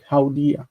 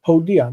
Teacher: The Ow diphthong monophthongizes and becomes O.